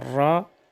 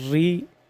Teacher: را کو پر ادا کرتے وقت زبان کی پشت اوپر مصولوں کے متصل تالو کے ساتھ زیادہ لگے، اور را کو باریک ادا کرتے وقت صرف زبان کا کنارہ مصولوں سے لگے. را کی ادائیگی میں حقیقی تکرار پیدا نہ ہو.